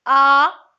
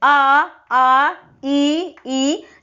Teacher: तो आपकी जो होंठ की जो स्थिति है वो मतलब क्या हो रही है, फैलावदार हो रही है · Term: अवृत्तमुखी